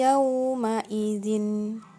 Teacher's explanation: masuk dengan dengung ketika bertemu dengan huruf ya membacanya ditekan dan ditahan dua harokat